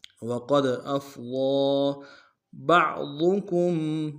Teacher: حمزہ کو فا کے سامنے آنا نم سے ادا کریں گے. ضاد کو موٹا ادا کریں گے اور ضاد کے اوپر کھڑا زبر ایک مقدار میں کھینچیں گے